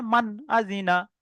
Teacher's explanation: নুন সাকিনের পরে হামজা এসে, আর হামজাটাই ছটার মধ্যে একটা, তাহলে এখানে গুণনা হবে না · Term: ইজাহার